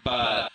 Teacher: Watch how the lips close the mouth gateway completely for this /b/ in 'but '.